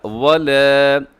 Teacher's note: اس میں الف آتا ہے، الف باریک ہے کیونکہ اس سے پہلے لام وہ بھی باریک ہے